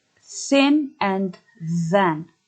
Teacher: The sound is dental fricative if the tongue tip moves forward to the upper teeth.